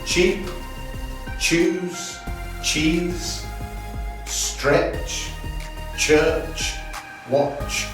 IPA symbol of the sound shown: ʧ